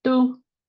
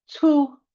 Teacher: Some people said tu with like an unaspirated T. Some people said tu with a very aspirated T. Some people said su with a TS.